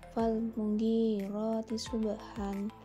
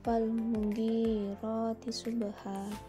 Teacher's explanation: Mad iwad bacaan dibaca panjang sebagai pengganti dari fathah tain yang diikuti alif karena dibaca waqaf atau berhenti. Cara membacanya dibaca panjang satu alif atau dua harokat.